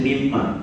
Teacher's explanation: Kita masukkan bunyi nun mati ke dalam bunyi mim. Sebab tu kita sebut mim ma. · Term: idgham ma'al gunnah